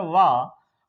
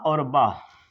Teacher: वाह जो है आपका ये क्या है, दंतोष्ठ्य है। अब बा जो है आपका ये सिर्फ ओष्ठ्य है, इसमें दोनों ओठ जो है वो मिलेंगे।